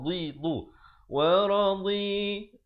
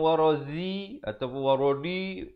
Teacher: Ni'mati wa radhi. Di tepi lidah makhrajnya.